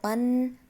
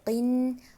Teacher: اب آپ نے نوٹ کیا ہوگا کہ یہاں دونوں دو زبر اور دو زیر، یہاں پر میں نے آواز پہ ناک میں لے کر گئی ہوں اور روکا ہے تھوڑا سا، یعنی کہ غنہ کیا ہے